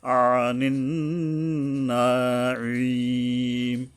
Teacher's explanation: আনিন নাঈম, এই নুনের পরে আবার আইন আসছে, তো এখানে আইন গলা চেপে সাবধান উচ্চারণ করতে হবে